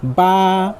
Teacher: ये हुरूफ दोनों होठों के तर हिस्से से अदा होता है यानी दोनों होठों की भीगा हुआ हिस्सा से अदा होता है।